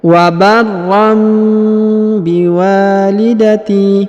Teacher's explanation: tanwin bertemu dengan ba, maka tanwinnya atau annya melebur atau menghilang dan berubah menjadi mim ya, berubah menjadi bacaan mim